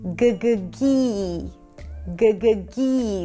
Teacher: So the tongue pulls back for the g and then forward for the high E